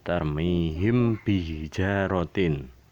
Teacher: di sini mim mati bertemu ba mempertemukan bibir atas dan bibir bawah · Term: ikhfa safawi